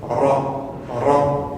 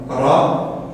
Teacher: Ça va être un R roulé, d'accord? Donc on va utiliser le bout de la langue, mais également l'arrière de la langue.